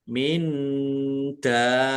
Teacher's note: Harus dibaca 6 harokat. Panjang dulu, ya, panjang dulu, baru masuk ke tasdid. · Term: mad lazim musaqol kilmi